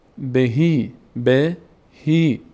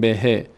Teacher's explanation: بهی کشیده میشه چون یا آمده بعد از کسره